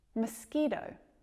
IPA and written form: mɒˈskiːtəʊ (mosquito)